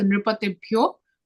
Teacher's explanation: visarga after nripatibhyah will become o